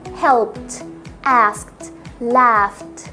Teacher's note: لما احط ايدي هنا مش هيفيل vibration، فهنطقها ت